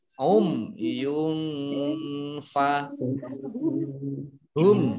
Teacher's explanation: dumah tanwin bertemu dengan huruf fa bacaan ikhfa dibaca samar-samar